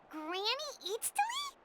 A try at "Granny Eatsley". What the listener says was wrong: But emphasis on Eatsley, not Granny.